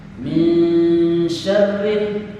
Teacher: Shinnya dibaca desis, tebal. Min syarril, dan dipastikan huruf ro yang keluar getarannya minimal 2 getaran.